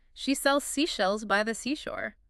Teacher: it has to be just behind your teeth for the S but then a little further back for the sh